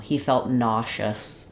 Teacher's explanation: another um pronunciation for that letter s it becomes nous so we now have the sh sound for that letter s